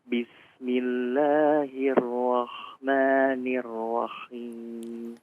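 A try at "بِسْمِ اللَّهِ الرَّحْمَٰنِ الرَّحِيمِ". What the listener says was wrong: Saya nggak tahu salah dengar apa nggak, itu kayak kho ya. Rahmanir Rahim. Kayak condong ke kho ya. Coba diperhalus lagi. Rahman, haknya.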